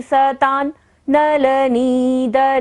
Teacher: वहां पर बिंदी का उच्चारण न होगा क्योंकि बिंदी के बाद क्या आ रहा है, न, नलनी